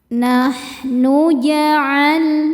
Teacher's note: Ada lam sukun yang tidak menghadapi lam atau ro, maka lam ini dibaca dengan jelas. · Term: lam mutlak